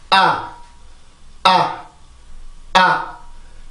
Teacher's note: 일단 A 발음이 발음기호상에서 나타나게 되면 아 이렇게 발음을 했죠. 아래턱이 많이 내려가고 혀 끝은 아래 치죠 뒤에. 그리고 혀 중간에 턱이 내려가면서 자연스럽게 따라 내려가 주면 돼요.